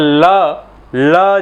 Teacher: जीभ जो है राइट साइड में दाईं तरफ जाएगी और ध्वनि जो है बाईं तरफ से निकल जाएगी, बगल से निकल जाएगी, इसलिए इसे हम बोल रहे हैं पार्श्विक ध्वनि।